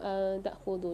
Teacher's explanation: یہاں نون ساکن کے بعد تا آ رہی ہے، غنہ کر کے پڑھیں گے